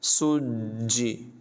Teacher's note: और ज़ाल जो है तमाम जगहों में इसमें सीटी की आवाज़ हरगिज़ पैदा ना होने दें, यानी इसको वइज़ल ज़ल नहीं पढ़ेंगे बल्कि पढ़ेंगे वइज़ल बिहारु सुज्जिरत। सुज्जी, जीम को ज़रा ज़ोर लगाकर जमाओं के साथ पढ़ेंगे, ये हरूफ़ क़लक़ला में से है, और रा को पुर पढ़ेंगे सुज्जिरत।